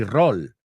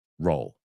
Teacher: No es tanto o, es más cerrado, roll. Fijaos también siempre en la longitud del what's the word?